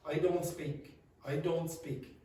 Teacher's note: You don't hear the T. Very often that disappears. So the vowel is extended more.